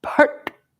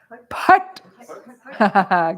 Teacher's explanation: it's a retroflexive ta